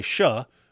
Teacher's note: some Arabs can't pronounce the ch sound so they say sha